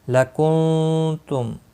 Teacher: نون ساکن کے بعد حروف اخفاء میں سے ایک حرف تا آیا ہے، اخفاء حقیقی ہوگا